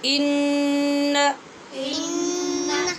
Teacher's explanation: غنہ کریں گے نون پہ مگر لمبا نہیں کریں گے